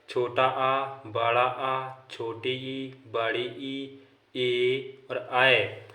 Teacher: जिन स्वरों के उच्चारण में ओंठ वृत्तमुखी या गोलाकार नहीं होते हैं उन्हें आवृत्तमुखी स्वर कहते हैं